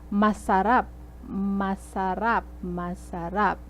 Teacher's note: the third syllable is the stress